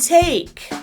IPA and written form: teɪk (take)